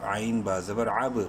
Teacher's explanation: با حروف قلقلہ میں سے ہے، ساکن ہونے کی وجہ سے یہاں پر قلقلہ ہوگا